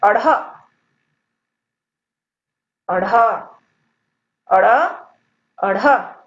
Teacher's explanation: इसमें जीभ जो है मूर्धा को छूकर नीचे की ओर गिरती है। देखिए ड और ढ में जीभ जो है सिर्फ मूर्धा को छूती है, लेकिन इसमें जीभ जो है मूर्धा को छूकर नीचे की ओर गिरती है, इसलिए इन्हें द्विगुण व्यंजन भी कहा जाता है और इसका एक नाम उत्क्षिप्त व्यंजन भी है।